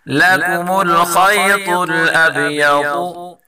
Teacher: اور با میں قلقلہ کریں گے